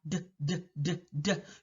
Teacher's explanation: If you were to take that same method, put those two fingers by your Adam's apple or on your Adam's apple and make the D sound, D, D, D, D, you're going to feel the vibration of your vocal folds, and that's all voicing is.